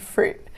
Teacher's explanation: I was using a glottal stop at the end